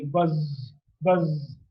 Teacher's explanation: the spirit so I buzz-buzz so saw is a voiced some the vocal cords are held loosely together with the air passes through there's a lot of lot of vibration so we get it sound so the state of the glottis